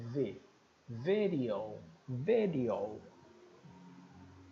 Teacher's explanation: o f e o v são lábios dentais né o dente superior encosta no lábio inferior